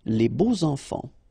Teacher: even if you've got this X, well, phonetically it will be like Z, so like if it would be an S, okay? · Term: liaison